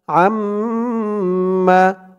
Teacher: আইন দিয়ে এই নুনকে না ধরে এই তাসদিদ ওয়ালা মিমকে ধরতে হবে। এখানে ঈদগামে বাগুন্নাহ গুন্না হবে, কারণ নুন সাকিনের পরে ঈদগামে বাগুন্নার 4 হরফের এক হরফ মিম আসছে। আইন মিম জবর আম, এমন গুন্না হবে।